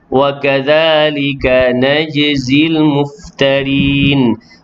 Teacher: Jim yang sukun dalam kalimah tersebut qalqalah